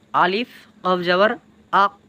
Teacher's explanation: এই কফ উচ্চারণ হয় কোত্থেকে? আমাদের যে জিহ্বা আছে, এই জিহ্বার গোড়া থেকে উপরের তালুর সঙ্গে মিলিয়ে উচ্চারণ হবে কফ।